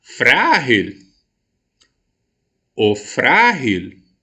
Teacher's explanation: Observe que eu empreguei maior potência vocal na sílaba frá. Então, a sílaba tônica é a penúltima da minha palavra.